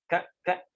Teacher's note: jadi dia keluar dari pangkal lidah pangkal lidah lidah paling belakang